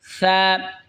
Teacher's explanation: জিহ্বার আগা সামনের ওপরের দুই দাঁতের আগার সঙ্গে লাগা উচ্চারণ হবে সা, নরম হবে সা